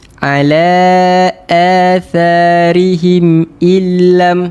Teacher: Izhar syafawi. Ha tak perlu dengung, tak perlu panjangkan harakat. Cukup jelaskan harakat. Jelaskan bacaan sahaja.